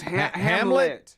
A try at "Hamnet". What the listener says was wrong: This has an N in it. Hamnet. Yeah.